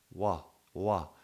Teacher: Even though you're moving the lips, W is happening in the velar part of the mouth, in the back part of the mouth